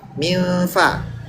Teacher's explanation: Jadi bilang N tapi sambil mulutnya fa.